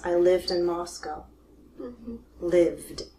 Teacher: The last sound is a V. V. It's voiced.